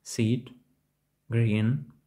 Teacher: звук і схожий на довгий голосний звук і в українській мові Seat Green звук і вимовляється як короткий голосний звук і в